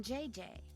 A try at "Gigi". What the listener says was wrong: En français, you pronounce G like J and J like G. She may very well be JJ in America, but in France, she is Gigi.